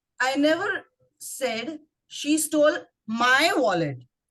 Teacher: When you stress on the word my, it could mean not me, somebody else's wallet.